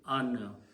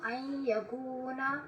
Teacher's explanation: But after that, if there is a ya, then noon sound changes into noon gunna sound. It should come out of the nose instead of the mouth. · But when a ya comes after noon, then the sound of noon should come out from the nose, not from the mouth